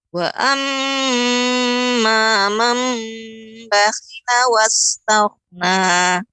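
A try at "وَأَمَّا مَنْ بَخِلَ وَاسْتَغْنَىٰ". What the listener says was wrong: Wastaghna. Dia tidak berhenti tak, bukan tak, tapi dia seperti menarik. Nah, seperti itu.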